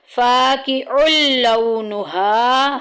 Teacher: ہم نے رول کیا پڑھا تھا کہ جب بھی نون ساکن یا تنوین کے بعد یرملون یا را میم لام واو نون میں کچھ بھی آ جائے گا وہاں ادغام ہوگا، ملائیں گے، لام اور را میں غننے کے بغیر ملانا ہے۔ فاقع لونها، ہا میں دیکھیں الف پیچھے زبر آ گئی، الف مدہ کا قاعدہ جاری ہو رہا ہے، 1 الف کے برابر لمبا کریں گے۔